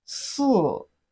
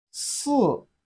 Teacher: it has the fourth tone of Chinese language